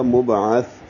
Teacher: یل لنبیل لہم، میم کو با سے ملاتی ہوئی ابعث ہے، اور با ساکن ہے، تو با ساکن میں قلقلہ ہوگا، لہو مب ہو جائے گا مبعث، عین وسط حلق سے، اور سا نرمی سے پڑھیں گے، زبان کی نوک سامنے کے دانتوں کے اندرونی کناروں سے لگائیں گے، لہو مبعث، اور سا پہ ہمس ہے، ہلکی سی سانس کی آواز پڑھنے میں جاری رہے گی۔